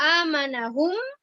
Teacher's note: Dibaca dengung, ditahannya 2 harokat. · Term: idgham bi gunnah